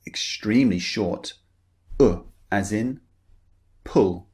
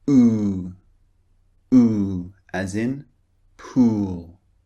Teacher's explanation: the first one slightly rounded lips the second one very rounded lips and the first one is very short the second one long